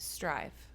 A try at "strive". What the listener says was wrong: Sounded like you said drive. Strive, not drive.